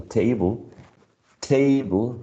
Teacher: table is stressed on the first syllable